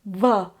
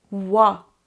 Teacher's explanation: wa is said without contact between the parts of your mouth it's not VA your lips are not touching your teeth it's